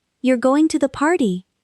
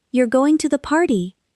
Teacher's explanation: with a question intonation, rising at the end. Then with a statement intonation, falling.